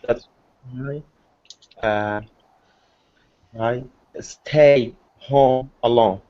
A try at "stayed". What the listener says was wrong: Stayed. Well, let me hear that D, brother. Stayed.